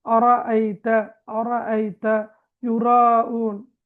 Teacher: அப்ப இதுல பாருங்க, சட்டம் என்று வரக்கொள்ள தஃஹீம் ராவை வல்லினமாக மொழிகிறது. ராவுக்கு ஃபத்ஹா வந்தா நாங்க அதை வல்லினமாக மொழிய வேண்டும்